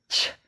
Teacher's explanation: फिर यहाँ अघोष वर्ष स्पर्शी संघर्षी ध्वनि, ये जो है छ, जो दांत के सॉकेट होते हैं जहाँ से दांत निकला है वहाँ उन मसूड़ों को छू कर पैदा होती है